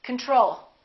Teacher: We say control. Second syllable is stressed. The first O is reduced.